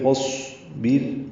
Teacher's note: فاصبر میں فا کو صاد سے ملانا ہے، فا اور اصبر ہے، فا صاد سے مل جائے گا، الف نہیں پڑھیں گے. صاد ساکن ہے، اس پہ سانس جاری رہے گی پڑھتے ہوئے. فاصبر، بیر میں را باریک ہے، صاد پر ہے، حروف مستعلیہ میں سے.